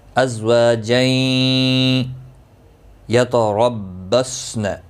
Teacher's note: را زبر کی وجہ سے پر پڑا جائے گا، صاد مستعلیہ ہے، پر پڑا جائے گا، اس پہ خیال رکھیں قلقلہ نہ ہو جائے۔